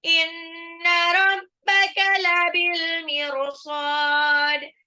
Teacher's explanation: Ada qalqalahnya, dalnya harus dipantul.